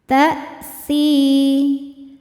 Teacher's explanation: Si mad tabi'i dhahiri karena ada ya sukun sebelumnya kasrah. Cara bacanya panjang 2 harokat.